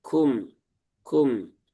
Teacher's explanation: Huruf kaf punya sifat salah satunya adalah hams dan itu adalah sifat zatiah. Artinya itu selalu ada pada huruf tersebut dalam kondisi sukun ataupun berharakat.